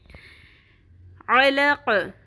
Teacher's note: عین کے مخرج کو وسط حلق سے نکالنا ہے. حلق کے بالکل سینٹر سے عین باریک آواز میں نکلے گا. علق, قوف پر بھی ہوگا اور قوف پہ قلقلہ بھی ہوگا.